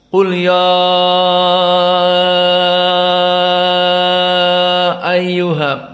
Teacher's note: mad jaiz munfasil dinamakan al-munfasil dikarenakan antara mad tabi'i ya bertemu dengan hamzah dalam keadaan terpisah